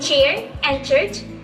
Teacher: So the sound starts like a stop. Airflow held back, but instead of releasing instantly, it releases slowly and turns into frication.